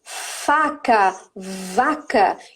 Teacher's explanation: é lábio inferior com dente superior